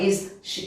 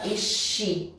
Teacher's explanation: Então, se eu for juntar com o she, mesma coisa, vou grudar aqui, vou aproveitar o som, tá? Aqui o som, não é que ele some, mas eu aproveito e uso um som só.